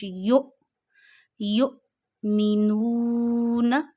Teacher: जब हमजा पे जजम्म आती है तो आप उसे झटका देते हैं।